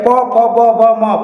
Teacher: जीभ एकदम बिल्कुल शिथिल रहता है। प फ ब भ म, ये दोनों ओठ चिपकता है और प की ध्वनियां निकलती है।